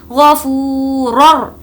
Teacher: Next غفو، فا واو پیش فو، اس کو کھینچ کر پڑھیں گے کیونکہ یہاں پر واو مدہ کا قاعدہ ہے۔ غفو رر، رر بالکل نارمل پڑھیں گے کیونکہ حرف یرملون میں سے اگر را آیا تو بغیر غنے کے پڑھیں گے